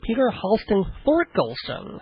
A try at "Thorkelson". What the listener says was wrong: Well, actually, the H is silent. No. Torkelson, yes. So, no, silent H, Peter Tork.